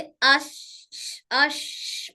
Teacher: शीन जबान के दरमियानी और तालु के दरमियानी